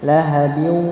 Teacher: dibaca idgham bi gunnah. Ya, karena tanwin bertemu dengan huruf waw.